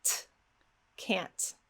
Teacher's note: Now, if you are not able to make that sound yet, that is no problem at all. You can go ahead and produce a regular release T.